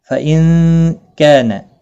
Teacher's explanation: نون ساکن کے بعد حروف اخفاء کا کاف اخفاء حقیقی ہوگا ، کا الف مدہ ہے ایک الف کی مقدار کے برابر